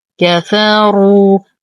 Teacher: نفخم الراء مع إتمام الضم